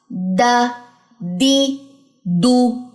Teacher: استفال کی صفت ہے، آواز اوپر کی طرف نہیں اٹھے گی بلکہ نیچے ہی رہے گی